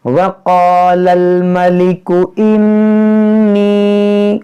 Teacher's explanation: نون مشدد ہے، اس میں غنہ کریں گے